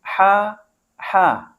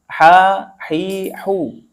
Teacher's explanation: ha itu adalah cara keluarnya di tengah tenggorokan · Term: huruf halqi